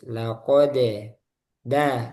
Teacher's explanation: Nah, dal tipis sehingga mantulnya juga tipis.